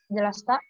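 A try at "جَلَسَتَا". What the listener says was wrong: Jadi yang huma sini sinnya tetap dibaca. Jalasata. Sinnya jangan jalasta, enggak, jalasata tetap dibaca sinnya. Ya, jadi baru sampai hunna baru suara sinnya dimatikan. Ya, kalau yang huma ini tidak dimatikan.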